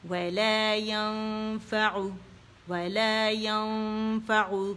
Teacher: ولا ينفع ولا ينفع ولا ينفع، نون پہ نہیں جائیں گے، نون واضح نہیں ہونا چاہیے، اسے چھپانا ہے ہم نے، تو حرف اخفاء کے قریب جائیں گے